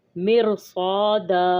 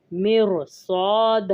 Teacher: جیسے مرصاد، اب را کے اوپر سکون ہے، را ساکن ہے، پہلے اس سے زیر ہے، اگلا حرف جو ہے وہ حروف مستعلیہ میں سے ہے تو ہم را کو موٹا پڑھیں گے صاد کی وجہ سے